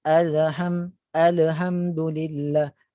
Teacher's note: Terdapat, yang pertama adalah terdapat pantulan selepas penyebutan lam